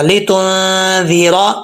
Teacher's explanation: را کے اوپر زبر ہے، پر پڑھا جائے گا، موٹا پڑھا جائے گا